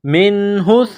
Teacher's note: نون ساکن کے بعد ہا ہے، حروف حلقی ہے تو یہاں غنہ نہیں کریں گے نون ساکن پر، منہ، ہا کو سا کے ساتھ ملانا ہے،